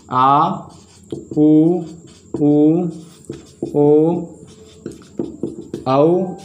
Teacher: जीभ पीछे सरकती है। और ये स्वर जीभ के पश्च भाग से बोले जाते हैं। ये स्वर जीभ का उच्चारण कहाँ से होता है, जीभ के पश्च भाग से होता है, पिछले भाग से इनका उच्चारण होता है दोस्तों।